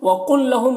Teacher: وقل لہم یہاں پر قاف کو لام سے ملا کر پڑھنا ہے، یہاں پر ادغام ہو رہا ہے